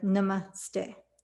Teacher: It's actually pronounced more like Namaste. So the emphasis is on the second syllable by my Indian family and teachers.